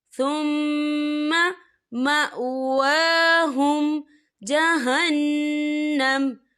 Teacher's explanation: متاع قلیل ثم مأواہم جہنم، یا دیکھیں ثم، یہاں میم مشدد ہے تو یہاں پر غنہ ہوگا، اور یہاں دیکھیں مأواہم، واو کے اوپر کھڑی حرکات ہے، تو ہم اسے 2 یا 3 حرکت کے برابر کھینچیں گے